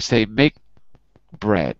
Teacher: there's almost no K sound, bread. And that is C to C, C to C.